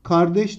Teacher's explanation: bu kalınla başlamış, inceyle bitmiş. Dolayısıyla büyük ünlü uyumuna aykırıdır.